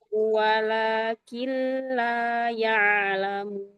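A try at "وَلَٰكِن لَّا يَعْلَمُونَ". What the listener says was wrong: Hati-hati tamtiknya. Nah, dilatih untuk dihilangkan ya. Tahqiq boleh, tapi tamtik Jangan diseret-seret.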